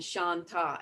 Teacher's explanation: every time we chant Shanta, we go down in the first syllable and then we go to the middle in the second syllable of every Shanta